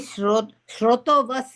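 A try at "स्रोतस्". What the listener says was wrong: Shroto, I thought your notebook said SHRO, and I said change it to SRO. Because Srotas Napumsakam is stream in Sanskrit. Srotas.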